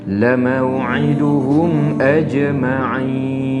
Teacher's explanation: hukumnya mad arid disukun, kena baca 4 ataupun 5 harakat